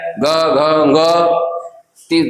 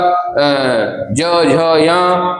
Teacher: ये जो वर्गों के तीसरे चौथे पांचवे वर्ण आते हैं इनमें कंपन ज्यादा होती है इसलिए इसलिए ये सघोष व्यंजन कहलाते हैं।